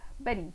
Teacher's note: the tongue quickly strikes against the passive articulators and quickly flaps forward